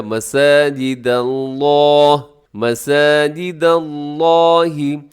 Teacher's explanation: یہاں لفظ اللہ کو موٹا پڑے گا لیکن دال کو باریک رکھیے گا۔ ایسے ہوتا ہے کہ مساجد اللہ، داللہ، ایسے کیا ہوتا ہے کہ ساتھ دال بھی موٹا ہو جاتا ہے، دال باریک رکھتے ہوئے لفظ اللہ کو موٹا پڑے گا، مساجد اللہ، مساجد اللہ۔